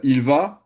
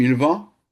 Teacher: Donc, si la personne dit il va, et que ça donne quelque chose comme il va, c'est-à-dire on entend un peu comme quelque chose d'un peu nasal sur le A, et bien l'idée, c'est vraiment de projeter la voix voilà, et de faire durer le son.